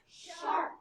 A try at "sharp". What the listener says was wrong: No, not shark. Sharp. Like a knife is sharp.